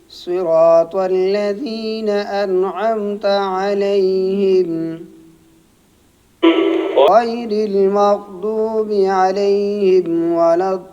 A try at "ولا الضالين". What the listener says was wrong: الضالين یہ طا نہیں آپ بھی اس کی طرح غلط پڑھ رہے ہیں ولا الضا زبان اوپر لگائیں صحیح